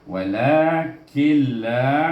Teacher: Kil jangan dipanjang-panjang banyak. Kil macam kita illallah, il tu tak ada panjang pun, dipanjang pula illallah. · Jadi maknanya bila gunnah tanpa dengung, wala kil terus, wala daripada kaf terus lam sana, nun dah tak berbunyi dah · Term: idgham bila gunnah